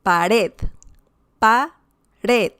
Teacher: you have certain punch on the last syllable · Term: stressed syllable